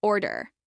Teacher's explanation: This is pronounced with stress on the first syllable.